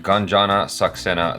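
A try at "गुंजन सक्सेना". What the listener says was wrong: GUNJAN. Where'd the extra A come from? Gunjana.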